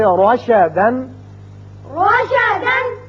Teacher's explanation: جب بھی را کے اوپر زبر آ جائے تو اس کو ہم پر پڑھیں گے، منہ بھر کے پڑھیں گے